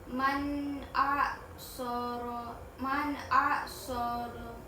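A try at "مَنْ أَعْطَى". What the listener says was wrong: Man a, oh ini huruf to.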